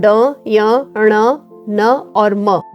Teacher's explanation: अनुनासिक कंठ तालव्य और मूर्धन्य तो उत्तर होगा इसका अनुनासिक क्योंकि आप इनका उच्चारण करके देखिए तो आपको एहसास होगा कि आप इन्हें नाक से बोल रहे हैं जो नाक से बोले जाने वाले शब्द है वे अनुनासिक कहलाते